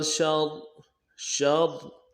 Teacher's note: پہلا را ساکن ہے اور موٹا کریں گے پہلے را کو